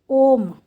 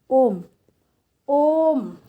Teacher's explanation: तो जिसमें 3 गुना समय लगे उसको कहते हैं प्लुत स्वर